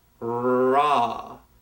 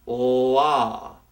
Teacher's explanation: difference between the r and l sound please keep in mind with the r sound we need a gap between the roof of our mouth and our tongue and when we make the l we do not